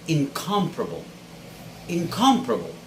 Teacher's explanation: the stress should be on the second syllable and there should be no other stressed syllable within this verb